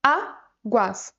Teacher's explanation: ela tem duas sílabas e a sílaba tônica é a penúltima sílaba, a. Então, pessoal, essa palavra aqui, ela é, de fato, uma paroxítona.